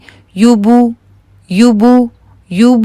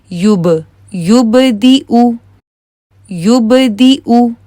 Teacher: उ की आवाज आ रही है क्योंकि हंठ गोल हैं